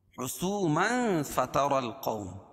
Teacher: اخفاء حقیقی کیونکہ تنوین کے بعد حروف اخفاء کے 15 حرفوں میں سے فا ہے. فتر را پور ہوگی کیونکہ را کے اوپر زبر ہے.